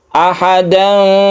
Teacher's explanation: Ini ikhfa juga tapi tidak condong ke Eng tapi condong ke Fa